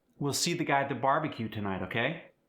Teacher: It's slightly monotone with subtle rises and falls